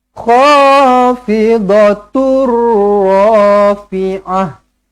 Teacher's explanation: tanwin bertemu dengan huruf ro sabdu jumpa dengan ro sabdu macam mana tidak perlu didengungkan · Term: idgham bila ghunah